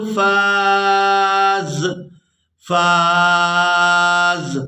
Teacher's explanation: اب یہاں پر بھی وقف کریں گے تو وقف کی صورت میں زا جو ہے یہ ساکن ہو جائے گی. فا کو الف مدہ کی وجہ سے کھینچتے ہوئے اس زا ساکن کے ساتھ ملائیں گے.